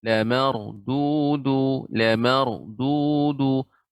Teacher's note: Ra dibaca dengan tebal. Ra sukun sebelumnya fathah.